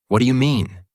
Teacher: with a questioning, slightly drawn out intonation